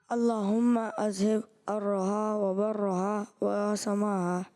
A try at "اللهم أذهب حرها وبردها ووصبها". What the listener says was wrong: اللہم اذہب حرہا وبردہا. برہا نہیں ہے، بردہا ووصبہا. ٹھیک ہے، تو دال بھی ہے بیچ میں، آپ درست کر کے پڑھیں آخر والے.